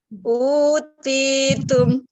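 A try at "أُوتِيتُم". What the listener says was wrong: Lagi kurang bulat taknya, kurang apa ya? Lagi utitum. Tumnya ya belum pas. Utitum.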